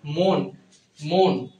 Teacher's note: অতি অদ্য পক্ষ এবং মনের ক্ষেত্রে অ থাকা সত্ত্বেও অ এর উচ্চারণ ও এর মত হচ্ছে